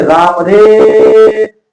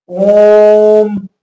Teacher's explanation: इसका उच्चारण करने में तीन मात्रा का समय लगता है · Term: त्रि मात्रिक स्वर